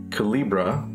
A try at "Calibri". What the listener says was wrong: Calibri. Calibri. You keep putting an A at the end of it instead of an I.